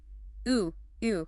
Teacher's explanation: High up in the front of my mouth, but with rounded lips. The sound is definitely not ooh and not E. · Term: French sound